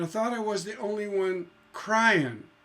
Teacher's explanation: Now, cry is where the stress is, and in is non-stress. There's no stress on that. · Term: feminine ending